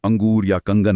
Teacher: अनुस्वार मतलब बिंदु का उच्चारण करते समय हवा सिर्फ नाक से निकलती है, जैसे अंगूर या कंगन में।